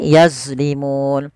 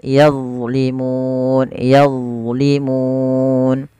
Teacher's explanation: pangkat ujung lidah kita menempelkan dengan gigi sari dan ditebalkan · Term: huruf dha